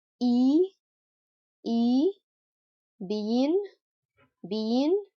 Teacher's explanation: four vowel sounds that occur in the front part of the mouth